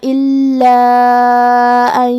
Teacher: مد جائز منفصل کا معنی ہے کہ حرف المد پہلے کلمہ کے آخری میں ہو اور اس کی وجہ جو کہ حمزہ ہے وہ دوسرے کلمہ کے شروعات میں آئے۔ مد جائز منفصل میں ہم اپنی آواز 2 سے 4 مد کے برابر لمبی کریں گے